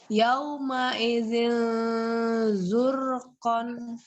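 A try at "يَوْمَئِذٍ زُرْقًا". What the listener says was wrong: Ya, ro-nya lebih tebal lagi ya Mbak ya. Zurqan.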